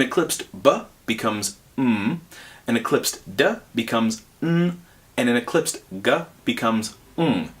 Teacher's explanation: my mouth is doing the same thing but for the Eclipse sounds the air is coming out of my nose instead of my mouth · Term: equivalent nasal